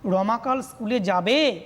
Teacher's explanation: দেখো রমা, এখান থেকে সুর তরঙ্গ সৃষ্টি হলো, অর্থাৎ লো থেকে হাইয়ে যাচ্ছে। প্রথমে লো থেকে গেল মিডিয়াম, যাবে যখন বললাম আরও হাই উঠে গেল।